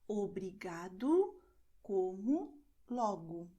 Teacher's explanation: the letter O at the end of the word is pronounced as U.